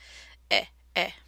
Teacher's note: tongue is forward and kind of in a middle position in the mouth